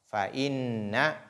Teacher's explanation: il faut faire la nasalisation au niveau de nun.